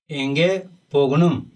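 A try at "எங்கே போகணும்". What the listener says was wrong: बहुत बढ़िया उत्तर है आपका, बहुत बढ़िया प्रयास है।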